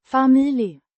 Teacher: pronounced family with emphasis on the first syllable